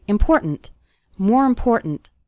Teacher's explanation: the word more kind of runs into the word important and the last syllable of important kind of gets reduced